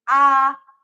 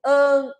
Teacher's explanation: an que é o som nasal da vogal a